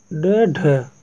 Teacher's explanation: ड ढ का जो व्यंजन वर्ग है वह है मूर्धन्य उत्क्षिप्त, उत्क्षिप्त जो है वह ड ढ का व्यंजन होता है, ठीक है, व्यंजन वर्ग होता है।